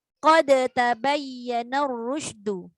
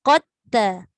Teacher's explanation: Tapi bila dah dia masuk pada huruf ta, iaitu huruf yang sama tempat keluar macam dal, maka tak ada bunyi qalqalah. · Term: Idgham dal sakinah kepada ta